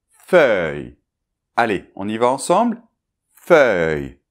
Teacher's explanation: Alors le début, la consonne F, ça ne pose pas de problème normalement, mais c'est plutôt après. Donc après en fait on a un E bien ouvert, et on termine par Y.